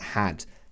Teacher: So it's not an A sound, not had, but had. So the mouth is quite open, the tongue is flat and quite spread.